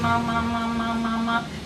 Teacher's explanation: So the flow is coming also from the mouth and also from the nose. So you get the typical nasal sound. You can feel that flow going through the nose as well as that.